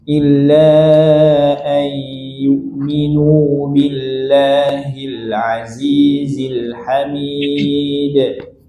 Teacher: Ayyu'minu bukan ayyu'minu billah, nunya panjang.